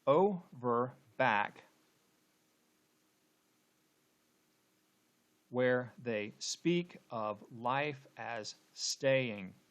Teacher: First line, okay, starts with a stressed syllable and ends with an unstressed syllable. Second line starts with an unstressed syllable and ends with a stressed syllable. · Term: feminine ending